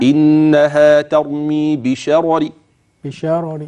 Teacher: ضمه اي حركه حركه اذا اصبحت راء ساكنه وقبلها مفتوح تفخم اما اذا اردت ان تقف بالروم وهذا هو الوجه الثاني في هذه الكلمه لحفص فانك تاتي بها مرققه